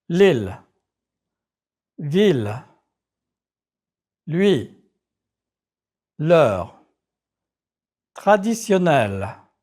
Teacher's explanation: sound tighter by touching the back of your front teeth and letting go quickly